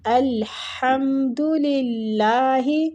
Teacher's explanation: ہا جو ہے وہ وسط الحلق سے